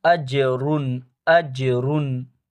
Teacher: نون کی آواز کو چھپائیں گے نہیں، بلکہ اس کو ظاہر کریں گے ، کیونکہ آگے حرف حلقی میں سے غین آ رہا ہے، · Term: اظہار